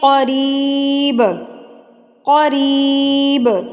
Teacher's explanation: قاف جو ہے یہ موٹے حروف میں سے ہے. قاف یہ آپ نے ہمیشہ موٹا پڑھنا ہے، چاہے یہ کسی حرکت کے ساتھ ہو